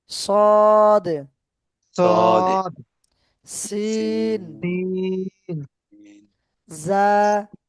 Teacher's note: সিটি আওয়াজ করে পড়তে হবে 3টি হরফ